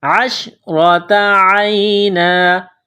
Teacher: را کے اوپر زبر ہے تو را کو موٹا کرنا ہے، عین کو یا کے ساتھ پلس کریں گے، عشرۃ عینا، جب یہاں سٹاپ کریں گے تو دو زبر کی تنوین کو الف سے تبدیل کریں گے.